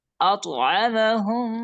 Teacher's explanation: এখানে উস্তাদ আমাদের আতআমাহুম, এখানে মিমের উপরে সাকিন আছে এবং তারপরে আরেকটা মিম আসছে, যে কারণে আমাদের পরপর 2টা মিম আসলে প্রথম যে মিমটা আসবে সাকিন যুক্ত মিম, সেই ক্ষেত্রে আমরা একটু গুণনা করে একটু সময় ধরে রেখে তারপর আমরা পরবর্তী ওয়ার্ডে যাব